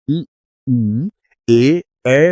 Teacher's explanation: जब हम ई, ए बोलते हैं तो जीभ आगे दांतों की तरफ आ जाती है। हाँ, इसलिए इन्हें अग्र स्वर कहते हैं।